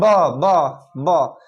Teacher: दोनों ओठ आपस में सट रहा है